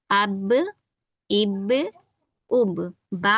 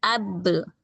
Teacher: हमारा हुरूफ कलकला में से भी है। इसको हल्का सा झटका भी देते हैं हम लोग। सुकून और जजम इस पे जब आता है तो इसे हम झटके से जैसे अब हल्का सा झटका हो रहा है ना?